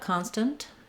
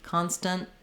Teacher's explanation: I might let that T out, constant, and then you can hear the little puff of air, or I might use an unreleased T, constant, where I just keep this N very short, and then that shows you that I'm making that T sound.